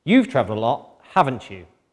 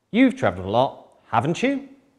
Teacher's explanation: So I hope you noticed that the first time I said this sentence, the intonation fell. And then the second time, the intonation with the question tag rose.